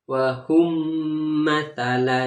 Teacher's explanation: Jadi cara membacanya harus dimasukkan dengan mendengung. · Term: idgham mislain